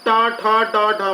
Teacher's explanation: जीभ मुड़कर थोड़ी पीछे की ओर ऊपर वाले हिस्से पे लगे, उसे मूर्धन्य या मूर्धा कहा जाता है।